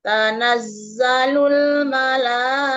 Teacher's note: Dari tanazzalul panjangkan mad wajibnya, konsistennya 4 harokat panjangnya.